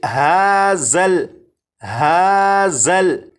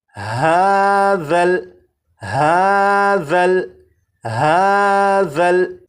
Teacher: اب اس لفظ کو پڑھیں گے، اور اس لفظ میں یہاں پر دیکھیں یہ ذال ہے، ذال کو نرمی سے پڑھیں گے، یعنی سی ٹی کی آواز کے بغیر پڑھیں گے، اور اس حرف کی سی ٹی کی آواز کو ختم کرنے کے لیے زبان کی نوک کو اوپر کے سامنے کے 2 دانتوں کے سرے سے جب لگائیں گے تو ذال کے اندر جو سی ٹی کی آواز ہوتی ہے وہ ختم ہو جائے گی۔ اب اس لفظ کو اس طرح سے نہیں پڑھیں گے ہازل ہازل، اس طرح سے نہیں، بلکہ ہاذل ہاذل ہاذل، 4 مرتبہ۔